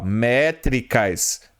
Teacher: Métricas são proparoxítonas com acentuação tônica na antepenúltima sílaba.